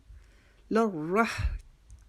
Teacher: را کے اوپر تشدید کی وجہ سے اور را کے اوپر زبر کی وجہ سے را کو موٹا بھی کرنا ہے